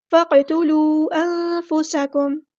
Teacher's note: سین کی سیٹی ہم نے واضح کرنی ہے